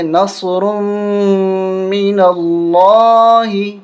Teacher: یہاں پر ہم غنہ کریں گے میم پہ، اور اس کے ساتھ تشدید بھی ہے تو سختی کے ساتھ پڑھیں گے